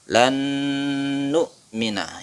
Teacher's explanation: Lan nu'mina nun mati bertemu dengan nun, idgham bi gunnah. Ditahan dipanjangkan.